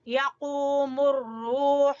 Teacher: यक़ू क़ाफ मोटा, ठीक है, जुबान की जड़ से। यक़ूमुर रूह, हा वस्ते हलक से।